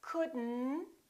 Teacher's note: we pronounce the D and then we connect the D next to the N and then the o disappears but the T also disappears